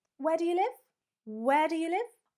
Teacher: Down-up intonation is referring to a question form.